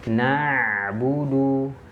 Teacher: Huruf hamzah itu dia sifatnya syiddah. Sedangkan ain tidak memiliki sifat syiddah. Maka jangan sampai tertahan. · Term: huruf ain